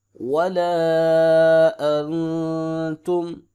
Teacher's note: حمزہ زبر نون نون ساکن ہے اخفا کریں گے